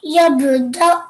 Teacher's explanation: So a jerking sound, galgala, but just a slight one because it's in the middle of a word.